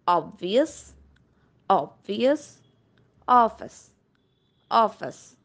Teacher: it is open back rounded vowel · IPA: /ɒ/